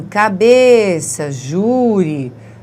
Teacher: a sílaba tônica é a penúltima sílaba